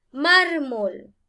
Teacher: es una palabra grave porque en la penúltima sílaba acá lleva el acento o la mayor fuerza de voz